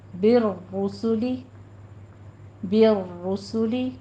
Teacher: را مفخم ہو جائے گی اور آپ ایک تھوڑی سی تکرار کرنی ہے، صرف 2 بار ادا کرنا ہے